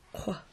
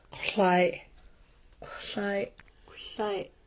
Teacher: sounds like the Q in the back of the throat, but you make the sound with your lips rounded